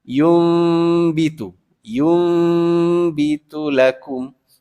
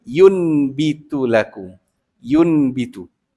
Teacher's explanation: bacaan nun tu ditukar kepada mim. Jadi seolah-olah huruf ya mim mati depan yum. Tapi kena dengung sebab selepasnya huruf ba.